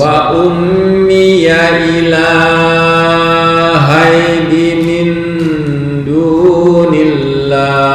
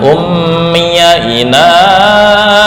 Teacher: Oke, ila ini hanya 1 alif atau 2 harokat. Jangan ummiya ilahai, ya itu kepanjangan.